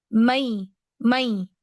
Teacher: I will be on the makhraj of ya. My middle part of the tongue will be raised to pronounce a ya.